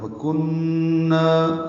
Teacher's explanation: کاف باریک نون مشدد پہ غنہ، نا الف مد ہے، دو حرکات لمبا ہے